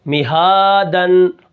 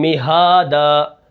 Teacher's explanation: اب وقف کے اندر غنہ نہیں ہوگا